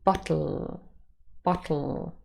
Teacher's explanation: here we have another word bottle and again you can see the second syllable has the schwa and a lateral bottle but said quickly it is often realized as bottle bottle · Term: syllabic consonant, syllabic-l